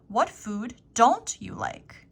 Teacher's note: emphasis on don't because this is a Content word